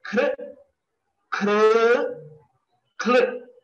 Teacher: consciously limit our energy only to the letter Khakara, since it is Mahaprana, and the remaining Swaras should be pronounced without much of stress or energy